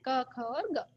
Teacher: कोमल तालू जिसे हम कंट ध्वनि भी कहते हैं